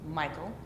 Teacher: it's a two- syllable foot um in which the stress uh comes in the beginning and the second syllable is unstressed